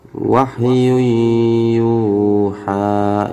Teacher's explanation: Ini yu-nya 2 harokat teman-teman ya, 2 mat asli.